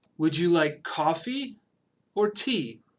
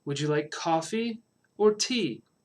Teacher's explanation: Would you like coffee or tea? Rising and then falling, right? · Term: choice question